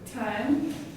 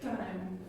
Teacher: In English, it comes from the alveolar region, and in Pakistani English, it comes from the palatal region.